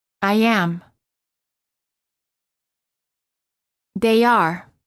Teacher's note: insert a very quick Y sound